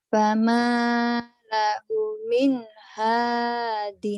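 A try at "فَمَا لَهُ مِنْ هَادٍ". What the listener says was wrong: salah panjang pendeknya dilihat lagi fama fama lahu min hadin kemudian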